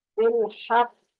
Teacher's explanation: تھوڑی دیر آپ ٹکائیں گے زبان کو اپنے نرم تالو پہ، پھر چھوڑیں گے